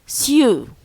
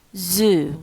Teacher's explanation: we have s, which is fortis and strong and voiceless, and the second is z, which is voiced, weak and leanness.